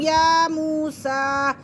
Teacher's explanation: یا کو بھی ایک الف کے برابر کھینچیں گے اور سین کو بھی، کیونکہ دونوں پہ کھڑی حرکات ہے۔